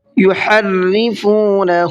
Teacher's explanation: ہا کو حلق سے نکالنا ہے اور را کو باریک کر کے پڑھنا ہے، اس لیے کہ را کے نیچے زیر ہے، اور را کے نیچے جب زیر ہوتا ہے اس کو باریک کر کے پڑھتے ہیں، اور زبر یا پیش ہوتا ہے تو منہ بھر کے پڑھتے ہیں۔